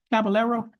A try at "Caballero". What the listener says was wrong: Caballero? Roll your R's, Judge.